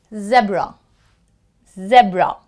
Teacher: since there are two consonants, even before you could finish the B, you already start the R sound.